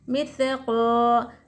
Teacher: الف سے پہلے حرکت زبر الف مد ہوگا، قا کو ہم ایک الف کی مقدار کھینچ کر پڑھیں گے